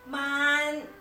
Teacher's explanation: Chinese has a high Rising tone similar to ours